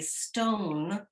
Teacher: When you say stone, you have a breath with the S sound. You have the O, which is elongated slightly, and you have that which is not, it's articulated in the nasal passages.